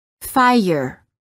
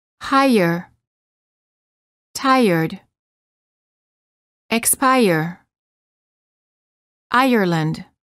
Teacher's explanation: quality of the vowel often changes when the r follows it there is a slight uh sound that is added after certain vowels making it sound almost as if the word contains an extra syllable